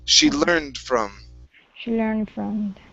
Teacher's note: Okay, so in ending that D, be a little less obvious with it. So it's learned from. So it's from. The D is really quick.